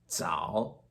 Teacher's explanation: sound kind of begins quickly almost like there's a D or like a silent D in front of it